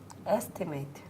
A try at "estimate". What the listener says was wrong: And what did you put as the last syllable? You put a diphthong, a, estimate. But as in holiday, yes. It's the same.